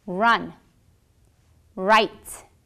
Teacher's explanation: your tongue will be bent pointing towards the roof of your mouth your vocal folds will vibrate and you will produce a slow stream of air flow listen